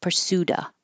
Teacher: if there's a consonant after the of, you don't have to say the V. Drop the V and just say pursuda.